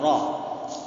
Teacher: Ro di situ tebal, maka kalau kita ikut jalur yang di Syam, maka itu tebalnya maksimal. Kecuali kita ikut jalur Mesir, tentu tidak terlalu tebal, tapi prinsipnya tebal. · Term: ro-nya kurang tebal